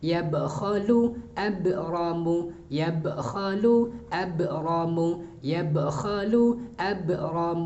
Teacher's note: Harus tampak qalqalahnya, mantulnya harus nampak ketika dia sukun. Ba jim dal thf ketika sukun dia harus dipantulkan.